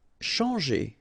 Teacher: you've got your nasal en, chan, and then g. Changer.